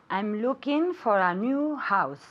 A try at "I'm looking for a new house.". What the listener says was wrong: Okay, very good, but I want you to pronounce the NG at the end. I'm looking, okay? It's a nasal sound, and a lot of people say looking, so it's looking.